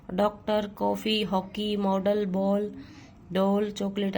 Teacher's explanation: अ और ओ के बीच की ध्वनि है।